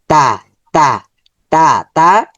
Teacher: জিহ্বার আগা উপরের দাঁতের আগাতে গোড়াতে স্পর্শ করবে।